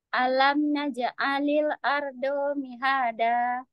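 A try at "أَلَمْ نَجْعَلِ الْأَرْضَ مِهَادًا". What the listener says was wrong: Setelah ja sukun itu langsung ain ya. Jadi nggak najak terus koma alil gitu. Ini contohnya. Alam naj'alil ardo mihada.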